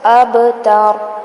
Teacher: هو الاب با پہ کلکلا کریں گے، ہلائیں گے اس کو